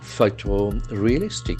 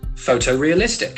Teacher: The accent falls on the first syllable.